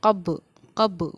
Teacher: قاف با زبر قب، قب، با پر ہمارے قلقلے کا قاعدہ جاری ہوگا، یعنی با ساکن پر ہماری آواز لوٹے گی